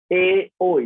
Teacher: এ, ওই যখন উচ্চারণ করছি কণ্ঠ এবং তালু এই দুইয়ের প্রয়োজন হচ্ছে, যার কারণে আমরা তার নাম বলছি কণ্ঠ তালব্য বর্ণ